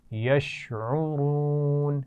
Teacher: یشعرون را کو موٹا پڑھیں گے اور اس میں واو مدہ بھی آ رہا ہے